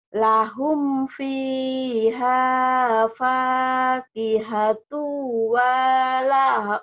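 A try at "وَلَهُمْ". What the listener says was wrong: Kenapa wanya panjang? Walhum. Nggak panjang.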